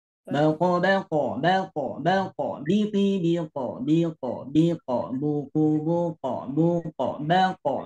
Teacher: Semuanya mantulnya ke bunyi O. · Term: huruf qalqalah